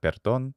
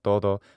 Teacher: And there we hear todo, all, and that is a true mid o, and also perdón. So we have perdón, which has true e and o, as well as todo. So these are all true mid vowels.